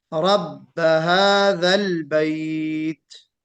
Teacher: हादल बैत में कभी कभी कलकला सुना गया बाज हजरात से, हादल बैत कलकला नहीं होगा। रब्ब हादल बैत, बैत कहते वक्त क्या करना है, हम्स जाहिर करना है ता में।